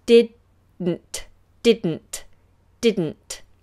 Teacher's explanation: we leave the tongue up on the roof of the mouth for the second D